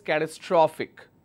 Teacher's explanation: my second last syllable will take the stress